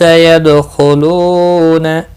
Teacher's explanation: دال ساکن پر قلقلہ ہوگا، خواہ مستعلیہ ہے، پر پڑھا جائے گا، لو واو مدہ ہے، فی یا مدہ ہے۔